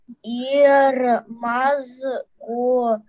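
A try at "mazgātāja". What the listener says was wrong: Мазгатая, да, здесь буковка А не пропадает,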